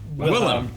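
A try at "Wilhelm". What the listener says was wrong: not william there's an l there's an elch there's an elch in there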